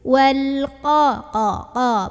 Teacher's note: Bukan ko, tapi qa. Naikin pangkal lidah